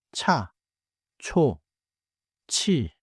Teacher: 치읓 makes an aspirated sound like 차, 초, 치. It is airier than 지읒 and not tight like 쌍지읒.